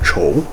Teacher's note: Though I suppose that kind of depends on where in China you're from, what accent you have, but at least from where I'm from, it's more of a ch sound than a k sound